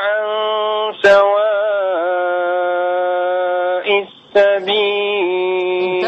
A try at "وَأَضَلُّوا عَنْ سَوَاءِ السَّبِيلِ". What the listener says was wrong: انتبه انتبه إلى اللام. استشعرت نعم. منك أنك تغلف اللام. وأضلوا رقق اللام.